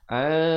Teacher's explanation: Disembunyikan ataupun disamarkan kadar 2 harakat di antara nun dan kaf. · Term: ikhfa hakiki